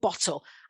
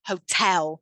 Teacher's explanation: still two syllables but the stress shifts from bottle to hotel